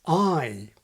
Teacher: the vowel of the word PRICE in modern SSB begins quite far back in the mouth · the vowel in the word price in modern SSB begins quite far back in the mouth, I. But the king actually pronounces it like the familiar symbol, I, beginning with a more front quality. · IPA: ɑj